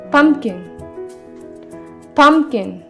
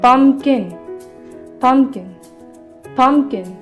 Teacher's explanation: मैं इसके पम मतलब फर्स्ट सिलेबल के ऊपर स्ट्रेस करूँगी और जो सेकंड सिलेबल है इसके ऊपर मैं स्ट्रेस नहीं करूँगी · तो अब स्ट्रेस देने का मतलब समझ आया। पम्पकिन, किन बहुत स्लो बोल रही हूँ, बहुत कम टाइम के लिए बोल रही हूँ, बट पम बहुत ज़्यादा टाइम के लिए बोल रही हूँ।